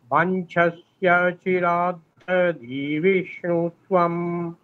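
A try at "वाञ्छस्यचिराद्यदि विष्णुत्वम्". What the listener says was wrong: আপনি একটু ধীরে ধীরে বলুন, হ্যাঁ, তাহলে উচ্চারণগুলো স্পষ্ট হবে। আপনার স্পিড হয়ে যাচ্ছে।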